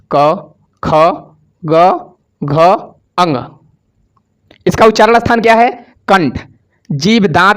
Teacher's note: जो के वर्ग है वह उसका उच्चारण स्थान कंठ हो जाएगा कंठ से बोला जाता है